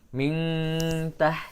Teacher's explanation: Makhraj ta itu dekat dengan makhraj nun, yaitu di ujung lidah. Nah, maka bunyi dengungnya lebih dekat kepada nun. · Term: ikhfa aqrab